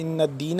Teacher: ان نون مشدد ہے، یہاں پہ ہم اس پہ کریں گے غنہ کریں گے